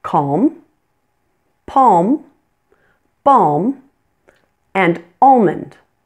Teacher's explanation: many people do not pronounce the L in these words but you'll notice that I do